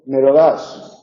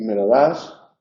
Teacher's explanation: me lo das enunciativo y me lo das es el tonema en la enunciativa es descendente y en la interrogativa es ascendente